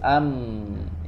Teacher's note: gunnah ya kalau digunnah huruf mim dia ada gunanya hmm hmm suaranya tidak langsung habis ya tapi ada ghunnah dulu ada dengung dulu